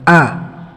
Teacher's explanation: Hamzah dan huruf a tempat keluarnya pada pangkal tenggorokan